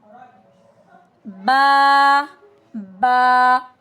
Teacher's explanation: با دونوں ہونٹ بند کر کے با ادا ہوتا ہے، from closing both lips tightly اور it's light letter.